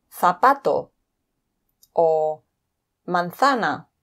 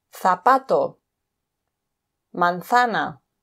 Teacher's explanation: the Z pronounced like th in thick